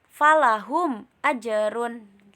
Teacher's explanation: dibaca jelas tanpa dengung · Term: Izhar Syafawi